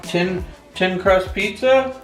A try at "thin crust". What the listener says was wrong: thin, not tin. T-H-I-N.